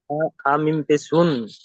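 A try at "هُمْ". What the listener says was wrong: লা হুন দেখেন লা হুন, হুন পড়লে তাহলে এখানে মিমের জায়গায় নুন আসতো, তাহলে হা নুন পেশ হুন হতো, কিন্তু এখানে মিম আছে, তাহলে কি হবে? হা মিম পেশ হুম।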